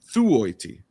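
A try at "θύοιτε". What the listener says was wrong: But it's not T, it's te. Well, it's a epsilon. Thuoite.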